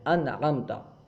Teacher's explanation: جیسے انعمتا، دیکھیے انعمتا میں نون ساکن ہے، اس کے بعد حروف حلقی میں سے عین آیا، جس کی وجہ سے نون کو ہم ظاہر کر کے پڑھ رہے ہیں۔ انعمتا، نون کو پورا ظاہر کر کے پڑھ رہے ہیں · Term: اظہار